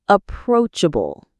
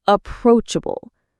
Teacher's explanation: The stress is on the second syllable, approachable.